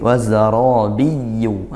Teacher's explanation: wazara ra-nya tafkhim karena ra fathah